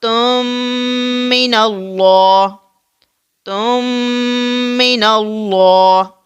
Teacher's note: تا کو میم میں مدغم کر دیں گے